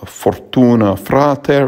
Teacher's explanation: we have a trilled r again